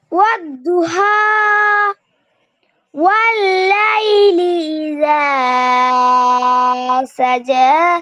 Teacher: ইদা এখানে একালিপ টান তিন আলিফের মতো শোনা গেছে